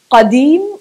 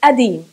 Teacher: Apart from the fact that this letter is never pronounced in the Palestinian Shami dialect. Yeah, we tend to ignore the qa and to exchange everything that's with the qa with the glottal stop